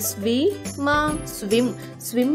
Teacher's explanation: ఎస్ W యొక్క శబ్దం స వ కాకుండా స్వ అవుతుంది కాబట్టి ఎస్ డబల్యు ఐ ఎం యొక్క ఉచ్చరణ అవుతుంది స్వి మ స్విమ్